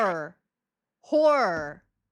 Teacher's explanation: the word horror is typically pronounced like horror with the emphasis on the first syllable